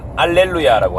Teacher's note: 이탈리아에는 히읗 발음 자체가 없습니다